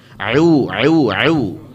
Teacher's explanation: jangan sampai a'u-nya itu keluar dari hidung. Karena ain cuma dari tenggorokan bagian tengah.